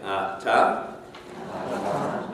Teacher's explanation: The air passes from the lungs. You have a complete closure behind the gums at the alveolar ridge, and so therefore you have what we call a plosive. · You have the at the release of the tongue, you have the little air coming out, and with the T sound, you actually hear the puff of air as well, which is the aspiration. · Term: plosive T